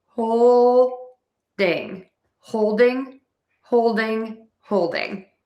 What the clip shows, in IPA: ˈhoʊl.dɪŋ